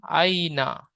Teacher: ইয়ালিনকে নরম আওয়াজে তাড়াতাড়ি পড়তে হবে, টান দেওয়া নিষেধ।